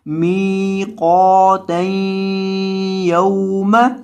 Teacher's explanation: میم کو لمبا کریں گے کیونکہ اس کے بعد یا مدہ ہے، قاف کو بھی آپ نے لمبا کرنا ہے کیونکہ اس کے بعد الف مدہ ہے، اور یہ جو یا ہے اس کے بعد واو ہے، یہ واو مدہ کا نہیں ہے، یہ واو لین کا ہے، اس وجہ سے اس کو لمبا نہیں کرنا